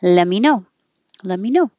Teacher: so we drop the T completely